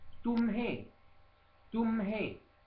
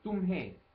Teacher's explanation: con questo he finale nasalizzato